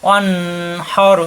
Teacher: এখানে নুন সাকিনের পরে হা স্পষ্ট হবে, কোনো গুণ্য হবে না